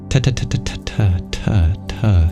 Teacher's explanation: It's hard to turn off the voice for that dental ta-ta-ta-ta-ta-ta-ta sound, but it is truly a T sound.